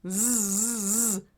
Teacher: Voiced Z like buzz, like a mosquito or a bee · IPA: /z/